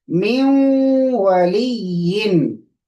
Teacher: light nasal sound, 10% nasal sound